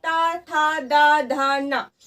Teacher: कहीं ना कहीं जो हमारी जीभ है वो कहीं ना कहीं हमारे दांतों को स्पर्श कर रही है, इसीलिए फ्रेंड ये वाली लाइन हमारी हो जाएगी दंतीय।